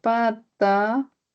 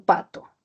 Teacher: Es una vocal central, la A, y es baja. Y la O, ¿cierto? Es posterior y es media.